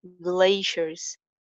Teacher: L sound, thodi si thick hogi